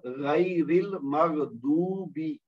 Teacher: را کے نیچے زیر ہے تو را باریک پڑی جائے گی